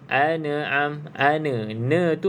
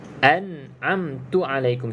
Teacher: jadi pegangkan dia pada makhraj tersebut pada makhraj huruf nun kemas-kemas jadi tak ada lantunan